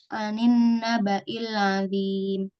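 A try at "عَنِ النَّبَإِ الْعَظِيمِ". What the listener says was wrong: Kasih baris. Azimnya jangan dimatikan dulu.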